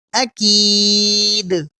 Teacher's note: حمزہ زبر آ، کاف یا زیر کی، اکی، دال پیش دو، اکید، وقفاً اکید، آخر میں قلقلہ کریں گے کیونکہ حروف قلقلہ میں سے یہاں دال ساکن ہو کر آ رہا ہے